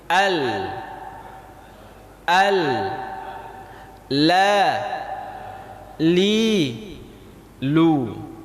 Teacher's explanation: Setelah huruf dhad ada huruf lam. Lam ini ujung lidah kita kena dengan langit-langit